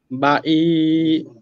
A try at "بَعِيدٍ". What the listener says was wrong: উচ্চারণ আইন উচ্চারণ টোটালি হচ্ছে না। বা ই কেন? বা ই ই ই বাই বাঈদ বাঈদ। আইন উচ্চারণ হচ্ছে না ভাইয়া। বা ই ই ই بعيد بعيد بعيد ضلال بعيد আবার